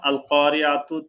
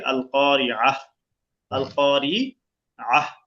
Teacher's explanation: অক্ফের সময় গোলতা সবসময় গোলহা হয়ে যায়, যেমন আল কারিয়াতু থেকে আল কারিয়াহ, আল কারিআহ, আল কারিয়াত থেকে আল কারিআহ।